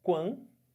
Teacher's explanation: Agora olha o que acontece no ditongo nasal. O som sai pela boca e sai um pouco de som pelo nariz.